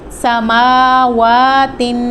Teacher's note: میم اور واو دونوں کے اوپر کھڑی زبر آ گیا ہے، تو ان کو ایک الف کے برابر لمبا کر کے پڑھیں گے